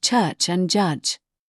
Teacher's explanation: The aricates, these are release sounds. They begin with a total blockage of air, a complete lock followed by a sharp release. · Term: Affricates